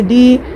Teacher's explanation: جیم میں یا مدہ ہے، یا ساکن سے پہلے جیم کے نیچے زیر ہے، 1 الف کی مقدار کھینچ کر معروف پڑھیں گے